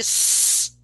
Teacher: Okay, well, again, zzz, no voice, but the same articulation as for Z